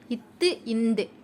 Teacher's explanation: நாக்கினுடைய நுனி மேல் பல்லினுடைய அடிப்பகுதியை போய் தொட்டுட்டு வருது, பொருந்துது.